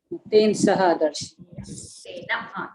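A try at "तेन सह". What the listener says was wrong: Tena saha. Don't say ten. Ten is wrong.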